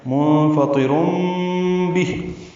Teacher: منفطر میں نون ساکن کے بعد فا آنے کی وجہ سے اخفا ہے. فا کو اور طا کو جلدی پڑھیں گے، طا کو پر پڑھیں گے.